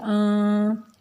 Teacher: نون کے اوپر غنہ کریں گے اور اس کی آواز ناک میں لے کر جائیں گے